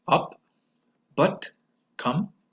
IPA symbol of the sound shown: ʌ